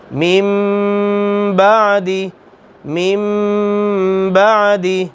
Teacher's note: اب نون نہیں پڑھنا بلکہ کیا پڑھنا ہے، میم